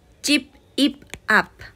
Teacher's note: Y por último tenemos la B y la P, que en este caso la B es la que va a cambiar y cuando va al final va a sonar como una P